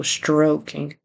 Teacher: Then he says stalking instead of stroking. So he needs to get that R there and a long O, stroking.